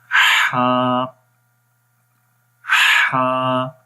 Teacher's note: استفال اگلی صفت ہے، اس کا مطلب ہوتا ہے باریک پڑھنا، ہا کو موٹا نہیں پڑھیں گے، باریک پڑھیں گے